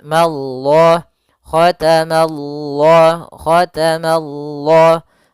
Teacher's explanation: Ya, mananya tipis, Allahnya tebal. Maka dia baca dengan lam yang tebal. · Ma-nya tipis, Allah-nya tebal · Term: lafzul jalalah